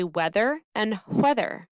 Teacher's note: In Wisconsin, we don't tend to say the h sound, but in other dialects it does occur.